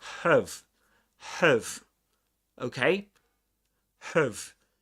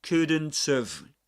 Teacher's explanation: We don't pronounce the initial h sound in have, and we pronounce it in its weak form.